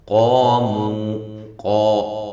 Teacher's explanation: لام کو باریک، میم کو بھی باریک، علیہم، عین کو واضح نکالیں، لی یا لین ہے، ہم میم ساکن کا اظہار ہے۔ قاموا، قاف کو خوب موٹا کریں، الف مدہ ہے، مو واو مدہ ہے